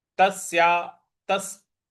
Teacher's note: यहां पे स पर हमको बल लगाना है।